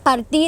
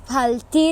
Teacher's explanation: The phonology of the R is completely neglected and is pronounced as a L.